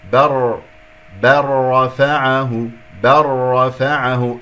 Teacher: إدغام اللام بالراء كما سمعتم